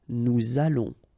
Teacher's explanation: O and together it's on, and then we'll make this little link between the two, what we call the liaison